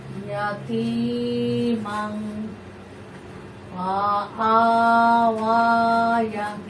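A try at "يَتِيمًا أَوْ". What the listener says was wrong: ইয়ার কোনো বলতেছো না? ইয়ার উপর কিছু আছে? ফা, ফা আ ওয়া। এই ইয়ার মধ্যে কোনো যে কিছু নেই, অতএব এখানে এই ওয়াটা লেখার মধ্যে আসবে, উচ্চারণে আসবে না। ইয়াতিমাং ফাআওয়া, ইয়াতিমাং ফাআওয়া। মান, মান, নাকে গুণা। ইয়াতিমাং, মাং না, মাং অনুসার।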